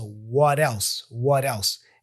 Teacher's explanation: we have the T here for what. We pronounce it as a flap T, da-da. So what else?